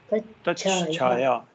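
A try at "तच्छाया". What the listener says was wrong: Chakara. Takara changes to chakara. So here there is no the movement to ja movement involved. Directly ta goes to cha. So lowercase cha and then mahaprana cha. Lowercase in the sense alpa prana cha followed by mahaprana cha.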